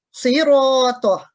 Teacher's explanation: منہ کو گول کر کے پر کر کے موٹا کر کے پڑھنا صاد، تو یہ مفخم ہوگی.